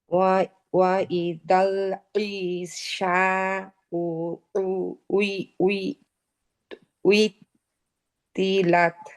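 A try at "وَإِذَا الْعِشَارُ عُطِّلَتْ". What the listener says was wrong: আচ্ছা, এখানে ঈশা রু রয়ের উচ্চারণটা আমি পাই নাই। এই যে আমরা বলি না ইশারা দেওয়া, ওই একই ইশারা। হ্যাঁ, ইশারু একই শব্দ।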